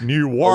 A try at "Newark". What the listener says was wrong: A little more. Yeah, because it sounded like you said New York, which sounds a lot more fun. Yeah, but it is not New York.